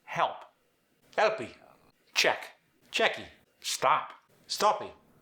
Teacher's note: When you're speaking with a Portuguese accent, rarely does it end on a hard consonant. So there's a tendency to add an extra vowel sound at the end of a word, even though it doesn't belong there.